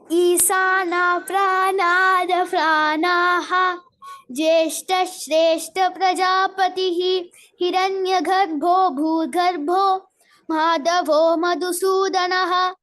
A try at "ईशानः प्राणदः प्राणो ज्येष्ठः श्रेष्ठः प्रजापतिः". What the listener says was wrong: In the first line, so the differentiation between sa, sha and sha should be very clear. This is Ishanah, sha, not sa, is not Isanah, Ishanah, Ishanah Pranadah Pranah.